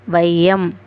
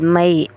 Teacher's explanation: ஐ என்னும் சொல்லின் முதலில் வரும்போது அரை மாத்திரையும் ஐ சொல்லில் இடையில அல்லது இறுதியில வரும்போது ஒரு மாத்திரை அளவிலும் ஒளிக்கும்.ஃர்ஸ்ட் முதல்ல வந்தா அது அரை மாத்திரை அளவில் ஒளிக்கும். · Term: ஐகார குறுக்கம்